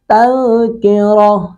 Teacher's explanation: تذکرۃن وقف کریں گے تو تذکرہ، رو کو پر کریں گے، تا گول تا وقف کی صورت میں ہاں ساکن میں بدل گئی ہے